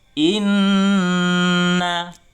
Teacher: harus pergi ke hidung supaya dia gunnah